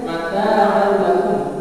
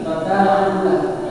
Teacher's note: Itu namanya idgham biguna. Memasukkan misalnya mata'an lakum, masukkan saja tapi tidak didengungkan.